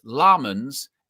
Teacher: emphasis on the first syllable.